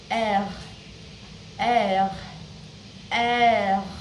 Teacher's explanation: in French R, we use the back of our throat.